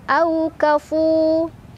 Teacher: Au ada harf lin karena ada waw sukun sebelumnya ada huruf berbaris fathah. Dibacanya dilunakan atau dilembutkan. Au kafu. Fu mad tabi'i karena ada waw sukun sebelumnya dhammah.